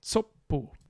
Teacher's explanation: Don't be fooled by TS being written with 2 separate letters. It's one sound. It's an affricate.